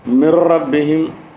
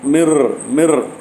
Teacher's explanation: சுகூன் பெற்ற நூன் அல்லது தன்வீனை அடுத்து லாமோ ராவோ வருமேயானால் குன்னா செய்யாமல் இத்ஹாம் மட்டும் செய்து ஓத வேண்டும் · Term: இத்ஹாம் பிலா ஒன்னா